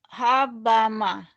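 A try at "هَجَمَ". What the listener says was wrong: hajama ini jim ya. Hajama, hajama,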